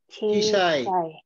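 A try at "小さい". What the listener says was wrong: Tidak cisai, karena tidak panjang ya. Cisai.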